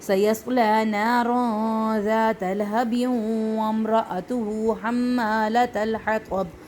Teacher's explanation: یہاں پہ ہو جائے گا ادغام کیونکہ آگے یرملون کا واو ہے تنوین کے بعد